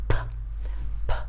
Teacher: with the unvoiced consonant, there is like a puff of air that comes out when you make the sound.